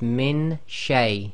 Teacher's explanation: we're going to do the min with ghunna, plus we're getting our tongue ready for the articulation of sheen instead of the noon